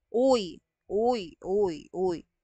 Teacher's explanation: Yung uy naman, kung titignan ninyo, yung dila natin ay umaatras. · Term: diptongo